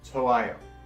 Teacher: the hyut often becomes kind of silent or very lightly pronounced